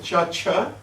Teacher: unvoiced in the sense the vocal cord is not fully engaged